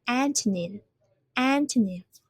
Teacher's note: we have three syllables and we have put the stress on the first one.